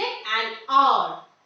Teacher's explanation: The H is silent over here. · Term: silent H